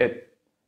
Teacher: I still prepare pressing with the tongue at the end, so I stop the airflow. It. Can you feel it?